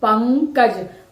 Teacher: ध्यान देंगे क्योंकि ये क है यानी क वर्ग का है तो क वर्ग का पांचवा वर्ण जो है उसकी ध्वनि यहां अनुस्वार के रूप में आ रही है